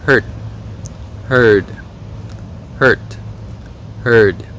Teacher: Mọi người để ý là mặc dù là hai cái từ này có khác nhau là âm t và âm d, nhưng mà bởi vì là hầu hết người Mỹ người ta sẽ không bật cái âm t và âm d ở cuối, cho nên cái cách để phân biệt hai từ này khi mà đọc riêng rẽ là nghe cái độ dài của nguyên âm.